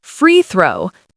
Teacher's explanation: Two words stress on free and a soft th in throw.